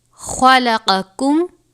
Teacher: خا اور قاف حروف مستعلیہ میں سے ہے، دونوں کو پر پڑھیں گے